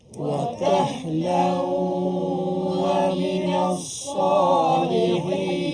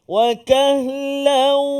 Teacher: Dimasukkan maka perlu dimasukkan suara huruf nun ke dalam huruf yang kita jumpa tu. Yang saya sini jumpa huruf waw. Jadi masuk beserta dengan dengung. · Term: Idgham ma'al gunnah